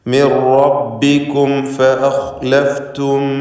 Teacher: ഇവിടെ ഇൽഹാർ ഷഫവിയാണ്, സൂക്ഷ്മതയോടെ ഇൽഹാർ ചെയ്യണം. ഫാ ഷഫവിയ അക്ഷരമായതുകൊണ്ട് മീമിൻ്റെ ഉച്ചാരണം അവ്യക്തമാവാൻ സാധ്യതയുണ്ട്.